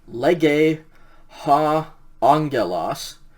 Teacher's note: remember those two gammas uh you pronounce that unga like an ng sound